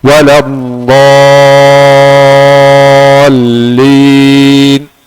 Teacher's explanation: lam ada syaddah dengan rakhawah sedikit ya. Bertengahan di antara syiddah dan rakhawah.